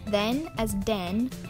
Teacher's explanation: replacing thorn with D because the thorn doesn't exist in Spanish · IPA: /d/ for /ð/